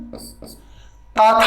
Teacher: ताथा जो होता है वो दंत्य वर्ण